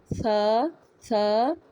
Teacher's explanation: دونوں دانتوں کے درمیان زبان کی نوک